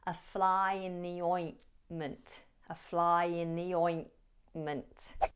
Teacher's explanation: So the ointment, the ointment. And the first T in ointment is often dropped. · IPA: /ə flaɪ ɪn ði ˈɔɪnmənt/